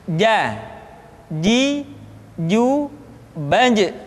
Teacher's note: Padahal kalau kita melihat sifat yang dimiliki huruf ja, dia tidak boleh mengalir nafas karena sifatnya aljahar, lawan dari alhames.